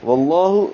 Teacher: واللہ لام اسم جلالہ کو موٹا پڑھیں گے کیونکہ اس سے پہلے واو پر زبر آئی ہے. واللہ تشدید بھی پر ہے، کھڑا زبر بھی پر ہے، ہا اقصى حلق سے.